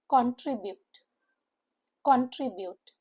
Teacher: The word contribute, like the word consistent, are three-syllable word with the stress on the middle syllable trib